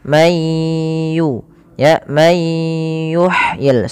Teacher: masukkan nunnya ke ya sehingga bunyinya diganti dengan huruf ya. Mayu, Ya, may yuhyil sambil ditahan 2 harokat.